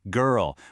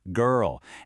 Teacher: In the UK, you get this kind of long vowel sound, girl. But in the US, you get that hard R at the end